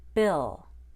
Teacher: I stretched out the I and then made a small short U sound.